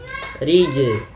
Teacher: ia bacaan qalqalah yang di mana dalam melafalkannya harus dipantulkan